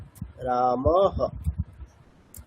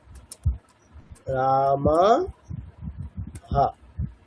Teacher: বিসর্গটা আমি হকার দিয়ে রিপ্লেস করব